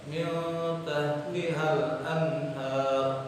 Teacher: Nah, dibaca jelas. Hak besar itu termasuk huruf halqi. Jadi nun mati bertemu hak besar jadi idhar.